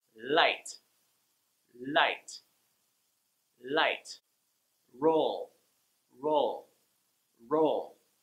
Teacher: When the L is at the end of the word... when you get to the L, your tongue goes up to that place just behind your upper front teeth